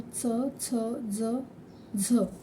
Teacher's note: दंत अधिक तालू म्हणजे दातांचा आणि टाळूचा या ठिकाणी स्पर्श होतो त्यामुळे त्याला दंत तालव्य असे म्हणतात म्हणजे दाताच्या मागील भागाला त्याचा